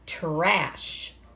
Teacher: It almost sounds like we're saying a ch sound there, doesn't it? But it's trash.